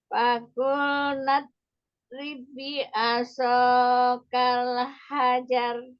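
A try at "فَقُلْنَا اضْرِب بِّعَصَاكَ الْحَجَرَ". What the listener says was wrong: Yang tahan dulu ya pada tasdid ba yang kedua itu ya. Faqul nadrib bi'asa. Jadi jangan langsung ribbi, tapi ribbi. Ya, nanti yang coba latihan pengucapan huruf bot yang sukun, lalu pengucapan huruf shadnya. Bi'a, ainnya juga diambil, jangan bi'asa, jangan seperti pengucapan huruf hamzah. Terus kalau misalnya yang bot sukun, hati-hati.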